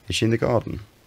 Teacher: In the British English pattern, there's a kind of rise in the early part of the question, and then that peaks on the last stressed syllable and then falls, sometimes with a little flick up at the end.